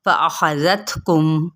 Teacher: خا کو پر کریں گے، تا پہ ہمس کریں گے